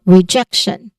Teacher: So the stress syllable here is on the middle part, jack.